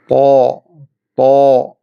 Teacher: നാവിൻ്റെ തലയും മേലെ മുൻപല്ലുകളുടെ മുരടും.